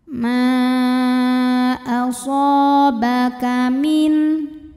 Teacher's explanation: mad tabi'i zahiri karena ada alif sebelumnya fathah, maka huruf shad panjangkan 2 harokat